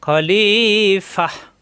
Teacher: গোলতা অকফ হলে ফা মিলবে হা এর সাথে